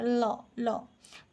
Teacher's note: ल ध्वनि उच्चारण बेले जिह्वाग्र वश्च प्रदेश सहित मिलित होई वायुमार्ग को नियंत्रित करे हैला। जेतेबेले आमे ल उच्चारण करूछु सेतेबेले जिह्वाग्रटा कोठी जाइकी ना वश्च रे जाइकी टच करूची हैला। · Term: पार्श्विक ध्वनि